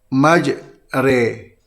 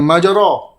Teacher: Dan imalah ini di antara fathah dan kasrah, di antara alif dan ya.